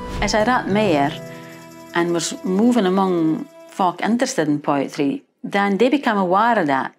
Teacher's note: replacing the with a d or a t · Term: TH sounds